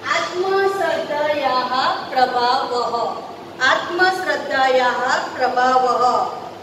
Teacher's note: यहाँ पे जो दो विसर्ग है वो विसर्ग को हमेशा हमको ह के इसमें उच्चारण करना होता है